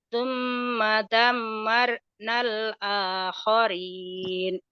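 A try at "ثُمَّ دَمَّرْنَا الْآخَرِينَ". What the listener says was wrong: Koknya kurang kotor. Tsumma damarnal akharin bukan akhorin, bukan akharin. Khair. khair ya, khair. Khair. Kho, kho. Tsumma damarnal akharin.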